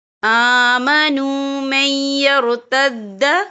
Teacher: یا ایہا الذین آمنوا من یرتد، یا دیکھیں آمنوا من، یہاں نون ساکن ہے، نون ساکن کے بعد جو ہے یا آ رہا ہے اور یا جو ہے حروف یرملون میں سے ہے، تو یہاں پر ادغام ہوگا، تو ہم اسے تھوڑا سا غنّے کے ساتھ پڑھیں گے۔